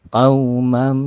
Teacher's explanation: Nah, yang ketiga adalah huruf mim, qaumam. Nah, kalau mim ini hanya dari hidung keluar udaranya ya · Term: idgham bi guna